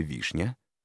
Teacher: в слове вишня ударение падает на первую гласную букву и поэтому ударный в этом слове первый слог а второй слог безударный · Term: ударный слог